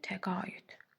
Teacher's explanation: A uzanır, ortaya y girir, təqaüd. Vəssalam, bu qədər sadə. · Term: səs artımı